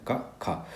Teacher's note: तो जो क ख है ये हमारे कंठ तक जाता है। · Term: कंठ ध्वनियां